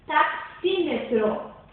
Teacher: A sílaba tônica é xi e a subtônica é tá. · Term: sílaba subtônica